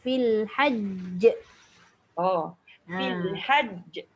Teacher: sebab ada sabdu tekanan dia kuat sebab jim tu asalnya 2